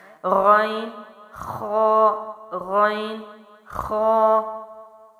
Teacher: غین اور خا، ان کی ادائیگی کیا ہے؟ حلق کے اوپر والے حصے سے، اور یہ موٹے حروف میں سے بھی ہے جو ہم پیچھے پڑھ چکے ہیں، اور ان کی آواز بھی موٹی ہوگی اور ان کی ادائیگی بھی مخرج یعنی بالکل قریب قریب ہے، تھوڑا سا ڈفرینس ہے اگر آپ ان تصویروں پر غور کریں تو۔